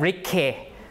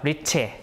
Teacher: this is a CH, okay, the T hook sound, because it's before a front vowel, so you have palatalization. So instead of Rike, not K, but Riche, like that, okay?